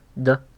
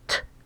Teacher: voiceless is your vocal cords are not moving so d t d is voiced T is devoiced